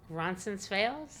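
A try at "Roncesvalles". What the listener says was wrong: I think you're adding an N. Okay, so I say Ronsis Fails.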